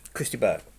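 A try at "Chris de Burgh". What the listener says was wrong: Christa Burr, not Christa Berg. No, it's Christa Burr. You don't pronounce the G. Christa Burr.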